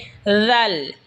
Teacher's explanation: জিহবার আগা সামনের উপরের দাতের আগার সঙ্গে লাগা উচ্চারণ হবে জাল